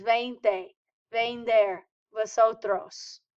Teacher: do not give me a hard V sound. It's almost like a B sound as in boy. Don't over emphasize the V.